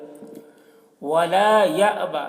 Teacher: یہاں پر حمزہ ساکنہ ہے، جھٹکا لگا کر پڑھیں گے